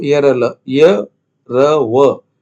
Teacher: इसके उच्चारण में वायु प्रभाव में न्यूनतम रुकावट होती है और ये अर्ध स्वर श्रेणी में आते हैं। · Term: अंतस्थ व्यंजन